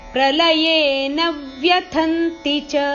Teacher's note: ನ ಮೇಲೆ ಆಘಾತ ಇದೆ